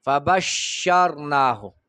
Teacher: د ټولو نه زیات تفشی به په شین کې هغه وخت کې وي چې دی مشددي